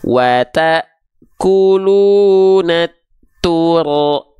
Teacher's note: Nah, jadi jangan sampai sekali lagi huruf ro getarannya berlebihan karena dia punya sifat takrir yang artinya dia tetap bergetar pelafalannya, tapi bukan dengan getaran yang berlebihan